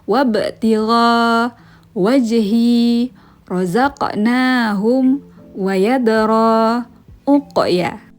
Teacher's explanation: hukum Qalqalah yaitu membacanya dengan cara dipantulkan